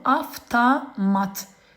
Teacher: Avtomat sözü V ilə yazılır, F ilə tələffüz olunur.